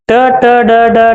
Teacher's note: ಇವು ನಾಲಿಗೆಯನ್ನ ಬಾಯಿಯ ಮೇಲ್ಭಾಗಕ್ಕೆ ಅಂಟಿಸಿಕೊಂಡು ಹೇಳುವಂತ ಪದಗಳು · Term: ಮೂರ್ಧನ್ಯ ಅಕ್ಷರ